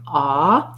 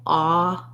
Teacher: You want some lip rounding. Ah, and the jaw is fairly open for that.